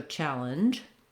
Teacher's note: lengthening on the cha and then shortening on linge · I start in the position for the D and I end in the position for the J sound